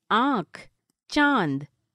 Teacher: अनुनासिक। आ इनको नाक और मुंह से बोला जाता है, जैसे आँख, चांद।